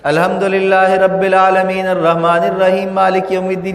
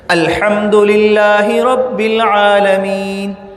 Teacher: ہا حلق سے نکل رہا ہے، را کو موٹا کرنا ہے، عالمین کو پڑھتے ہوئے عین کو کھینچنا ہے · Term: عربی لہجہ